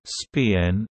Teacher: The unaspirated p in spin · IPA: [spɪn]